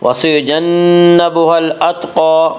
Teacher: قاف کو پر پڑھیں گے، قاف حروف مستعلیہ میں سے ہے